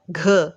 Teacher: तो अल्प प्राण में कम उच्चारण लगता है तो सांस की ज़रूरत पड़ती है, तो महाप्राण में सांस थोड़ा ज़्यादा लगानी पड़ती है